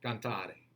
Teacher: a closed e and that's a sound we don't really use in english very much · That's a flip. But still, that final syllable in cantare, is a closed E.